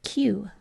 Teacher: we're often lazy when we say you when we just say the last part of that we say ooh